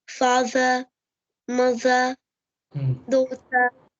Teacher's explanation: For example, father, mother, daughter, in those words, the R is not pronounced like in American English